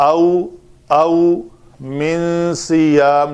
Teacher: نون ساکن کے بعد حروف اخفا میں سے صاد ہے تو اخفا کیا